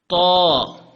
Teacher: اس کی آواز نکالنے کے لیے آپ کو اپنے اوپر والے دانتوں کے اوپر والے حصے پہ زبان لگانی پڑے گی